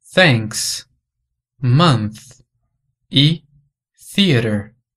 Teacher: É o chamado som interdental, aquele em que a gente coloca a ponta da língua para fora da boca, entre os dentes superiores e inferiores.